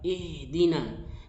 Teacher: ha itu dialirkan karena dia rokhawah